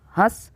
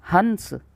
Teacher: हंस में क्या हो रहा है उच्चारण गुरु हो रहा है मतलब अधिक समय लग रहा है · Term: अनुस्वार